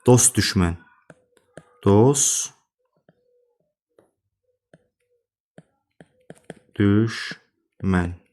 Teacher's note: S-dan sonra t işlənirsə, t düşür. Deməli, dost düşmən kimi tərəffiz olunacaq.